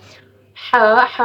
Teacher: ہا وسطی حلق سے ادا ہوتا ہے۔ اب وسطی حلق، وسطی کے تو آپ مطلب جانتے ہی ہوں گے کہ وسطی بولتے ہیں درمیان کو۔